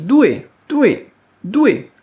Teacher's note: Le D, surtout pas expiré, hein, pas confondre avec le T.